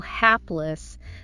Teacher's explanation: Stress the first syllable, hapless. That A is like in apple.